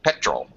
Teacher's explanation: the second syllable is an unstressed syllable, and we just use the schwa sound